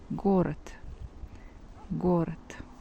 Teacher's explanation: So we see that T replaced D. If letter D stays at the end of the word, then we pronounce T.